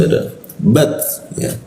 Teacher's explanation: huruf ta dimatikan itu akhirnya seperti ada hembusan